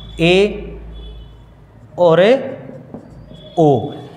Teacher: इन दो स्वरों का उच्चारण करोगे तो मुख जो है वो संवृत से थोड़ा ज़्यादा खुलेगा, तो वो हैं अर्ध संवृत स्वर।